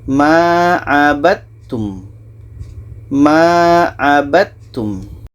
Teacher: Kalau di sini ada da bertemu ta, ini idgham mutajanisen. Jadi da yang asalnya ada qalqalah, ada dipantulkan, tidak jadi. Ba ini terus melompat ke ta.